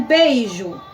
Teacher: eu primeiro tenho o som da minha vogal que é mais forte, depois tenho a minha semivogal que tem o som mais fraco